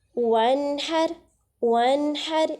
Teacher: نون ساکن کے بعد ہا آ رہی ہے اور ہا حروف حلقی میں سے ہے، تو اظہار ہو رہا ہے